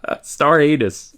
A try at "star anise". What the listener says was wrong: It pronounced star anise. Star anise and star anus, very different thing.